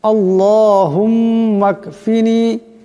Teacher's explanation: মিম মুশাদ্দাদ গুন্না করতে হবে